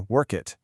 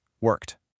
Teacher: And for past tense words like worked, you might hear work it. But the correct way is just a crisp t sound at the end